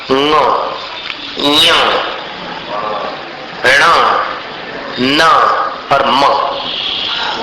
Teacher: जो पांच वर्ग के अंतिम अक्षर है उनका उच्चारण स्थान नासिका च नाक को भी मिलाकर करना पड़ता है। नासिका से भी उसका स्पर्श आवश्यक है।